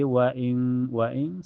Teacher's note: cara bacanya nun sukunnya disamarkan ke kaf dan ditahan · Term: ikfa hakik